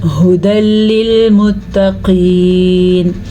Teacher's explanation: یہ قاف موٹی ہے تو اس کو پر کر کے پڑھیں گے